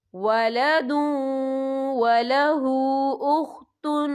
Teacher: اور آگے دیکھیں ولہ، ہا کے اوپر الٹا پیش بھی ہے اور اس میں چھوٹی سی مد بھی ہے، تو ہم یہاں 3 یا 4 حرکت کے برابر کھینچ کے پڑھیں گے